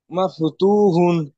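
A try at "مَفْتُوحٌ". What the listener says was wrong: good,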